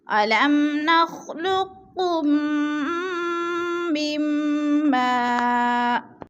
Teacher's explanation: اب نخلقکم میم ساکن کے بعد میم مشدد آ گئی ہے تو ادھر ادغام شفوی ہے، یعنی ادغام کر کے پڑھیں گے، سختی کے ساتھ ادغام بھی کریں گے اور غنہ بھی کریں گے · میم کو میم ساکن کے ساتھ ملا کر پڑھیں گے، درمیان والا نون ساکن نہیں پڑھا جائے گا، یعنی ادھر ادغام کریں گے.